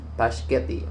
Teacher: In spaghetti, the initial clusters can be challenging, particularly for children. By adding a vowel a, the pronunciation becomes Paschetti, making the word easier to articulate.